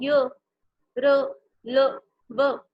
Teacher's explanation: उच्चारण में जिह्वा मुंह के किसी भाग को पूरी तरह स्पर्श नहीं करती, उसे छूती नहीं है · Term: अंत्य व्यंजन